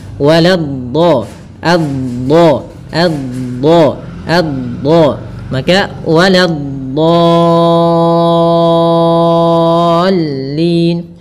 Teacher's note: Kemudian pada lafal dhad yang bertasydid dia memiliki sifat, salah satu sifatnya istitalah, memanjang dulu dotnya